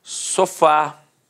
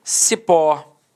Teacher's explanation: repare que a sílaba tônica é a última e é terminada de fato em a café repare que a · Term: oxítona